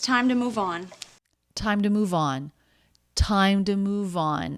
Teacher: And then part of the phrasal verb move on, the final word has some stress too.